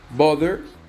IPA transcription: ˈbɑðər